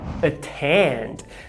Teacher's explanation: a segunda vogal é tônica e não átona